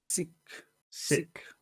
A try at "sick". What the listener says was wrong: Sick. Sick. Sick. You have to push back, not forward.